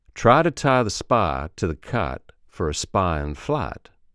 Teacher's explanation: The diphthong I loses the second I and it becomes a shortened A.